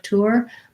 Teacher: i have to kind of lengthen almost into two syllables